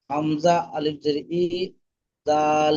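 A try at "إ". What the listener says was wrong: হামজা আলিফ হামজা আলিফ বলবেন না হামজা জের ই বলবেন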